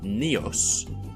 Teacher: prenasalized stops became pure nasals word-initially and plain voiced stops word-internally